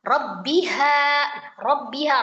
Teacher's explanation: ro berbaris fathah. Itu dibaca dengan tebal ya. Tafkhim karena dia baris fathah, fathah ya.